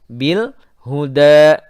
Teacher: Bil alif lam qamariyah, lamnya dibaca jelas. Bil huda, da mat tabi'i dua harakat.